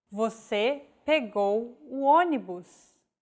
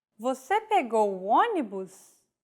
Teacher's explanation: With a question mark at the end and a raised intonation.